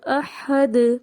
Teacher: احد میں ہا کا کلیئر ہونا ضروری ہے اور دال کے اوپر ہمیں قلقلہ واضح کرنا ہے، کیونکہ دال جو ہے ہمارا ایک باؤنسنگ لیٹر ہو جائے گا اگر اس میں سے وہ ختم ہو جائے گی حرکت۔